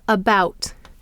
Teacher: English so it is a vowel found in the unaccented syllable for example we have the word about bout is the accented syllable and so we have the vowel schah uh the vowel a